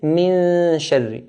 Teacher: we're going to take the noon very close to the roof of the mouth without touching it. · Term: hide the noon